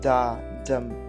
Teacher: rhythm moving from an unstressed syllable to a stress syllable